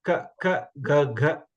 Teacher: this ka varga is called kantya, from your throat. Ka, when you pronounce, you can keep your finger on your throat and say ka, ka, ga, ga.